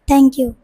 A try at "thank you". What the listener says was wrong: Listen, আমি th sound টি কেন শিখিয়েছি? থ্যাংক ইউ বলার জন্য।